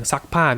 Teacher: unreleased voiceless consonant stops